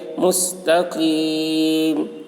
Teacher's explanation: حرف مد کے بعد سکون وقف کی وجہ سے ہے، اس لیے مد عارض وقفی ہوا. اس میں طول، توسط، قصر تینوں جائز ہے. طول اولا ہے، پھر توسط، پھر قصر کا مرتبہ ہے. · یا ساکن سے پہلے زیر ہے، یا مدہ ہوا، اس لیے یا مدہ کو ایک الف کے برابر کھینچ کر پڑھیں گے